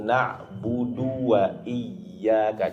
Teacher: الدال مضموم فقط ليس بعده واو. Jadi kalimat na'budu di huruf dalnya jangan seakan-akan seperti kita menambahkan huruf waw tasdid.